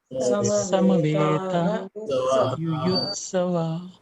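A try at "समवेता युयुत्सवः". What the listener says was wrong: This is called Visarga. Visarga is normally not there when you read fast. Samavetaha Yuyutsavaha.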